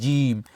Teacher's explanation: জিহ্বার মধ্যখান তার বরাবর উপরে তালুর সঙ্গে লাগে জিম। তাহলে জিম পেলাম, হাও পেলাম।